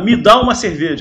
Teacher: no Brasil a gente fala com força, me, inclusive vira até mi, fica com som até de i, mi, que está errado.